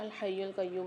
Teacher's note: واو مدہ بھی آ رہا ہے ساتھ یا کے، ایک الف مقدار کھینچ کے پڑھیں گے